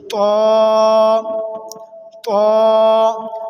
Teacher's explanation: तो को ज़बान की नोक और ऊपर के दांतों की जड़ से अदा करेंगे